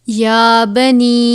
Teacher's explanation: یا کے اوپر کھڑا زبر ہے، ایک الف کے برابر کھینچ کر پڑھیں گے